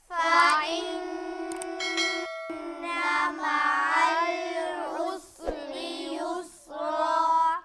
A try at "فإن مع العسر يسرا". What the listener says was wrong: सीन को हिलाना नहीं है, नून पर गुन्ना करेंगे।